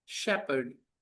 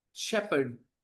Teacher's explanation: R is silent. H is silent. Think of it as SHEPED, shepherd.